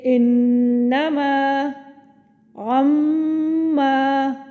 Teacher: نون مشدد کا غنہ اکمل اور میم مشدد کا غنہ اکمل یا غنہ کامل.